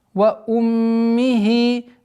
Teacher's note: Назализация в размере 2 огласовок, после которой уходим к кесру. Ва уммихи. Здесь у нас, естественно, долгота в размере 2 огласовок, кесры.